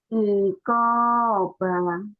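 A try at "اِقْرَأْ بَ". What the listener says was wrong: Enggak. Iko, ba, nggak boleh panjang, nggak boleh panjang latih ya. Karena kalau baca Quran nanti nggak boleh gitu. Iko, ujungnya dihentikan. Ini lagi melatih panjang dan pendek. Iko, ba, Iko, ba, ayo latih lagi.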